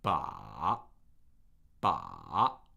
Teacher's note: the uh third tone has this characteristic trough at the bottom